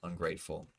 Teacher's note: Second syllable is gray, ungrateful. That is stressed.